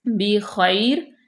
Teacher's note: بی خیر، یہاں پہ یا لین بھی ہے، یا ساکن ما قبل مفتوح ہے تو خیر نرمی سے پڑھیں گے، خواہ کو پر پڑھیں گے، با کو باریک